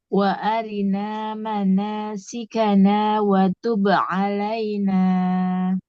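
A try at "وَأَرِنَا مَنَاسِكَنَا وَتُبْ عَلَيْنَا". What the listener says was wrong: Nunnya tapi hanya 2 harokat. Kalau kita waqaf, wa tub alaina.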